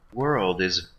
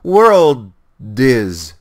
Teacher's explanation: Now look here, you see that there's nothing in between here, but I can hear a R, kind of the beginning of the next word has the sound of a D to me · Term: liaisons